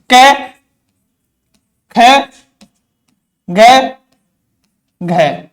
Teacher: स्पर्शी व्यंजन क्या करते हैं, दो उच्चारण अवयव वो एक दूसरे को स्पर्श करते हैं।